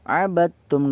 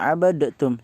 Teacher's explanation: Jadi qalqalahnya nggak usah dibaca, langsung masuk ke ta. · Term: idgham mutajanisain